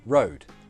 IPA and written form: rəʊd (road)